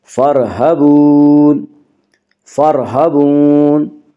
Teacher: را ساکن سے پہلے فا کے اوپر زبر ہے، اس لیے را ساکن کو پر پڑھیں گی۔